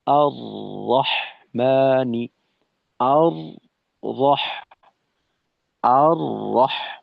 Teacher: তাকরার বলতে আমাদেরকে এটাই বোঝানো হলো যে তাকরার হরফ একটি র, তাকরার মানে বারংবার হওয়া। তো এই র হরফ উচ্চারণের সময় জিহ্বার আগায় একটা কম্পন তৈরি হতে চায়, হয়ে যায়।